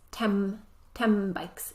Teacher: the reason why the sound becomes um sound is so that our lips are ready to make the next sound